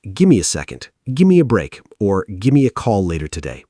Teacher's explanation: When native English speakers talk at normal conversational speed, give me blends together into gimme. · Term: spoken reductions